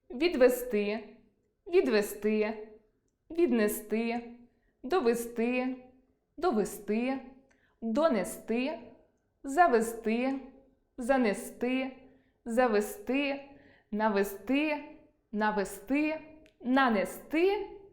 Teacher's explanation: У всіх словах на -сти, -зти наголос падає на и.